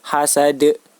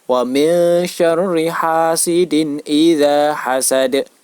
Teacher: Cara membacanya yaitu wajib dipantulkan, menyerupai huruf E, hasad. Wa min syarri hasidin idza hasad. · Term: qalqalah kubra